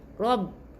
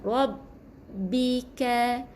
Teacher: huruf ra yang tebal bertemu dengan ba bersabdu jadi dia kena tebalkan kembungkan mulut